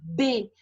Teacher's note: eu fecho e abro a minha boca os lábios se tocam então o som não passa livremente